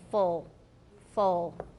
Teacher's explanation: if you make a very very back ooh you'll get a dark L as in full full with no alveolar contact